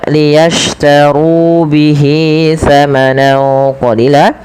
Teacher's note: ru tebalkan huruf ro-nya karena dia ro tafkhim